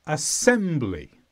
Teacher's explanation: this is a noun and the stress is on sem